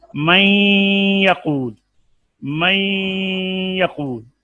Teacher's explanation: اب اس میں کیا ہے کہ نون کی صفت غنہ باقی رہ گئی ہے، تو یہ ادغام ناقص ہے